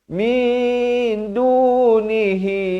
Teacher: Ramai silap dia bunyikan min, itu bunyi izhar. Di sini sepatutnya bunyi ikhfa.